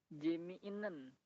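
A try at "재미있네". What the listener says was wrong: Tadi kalau nggak salah T-nya masih ke bawah.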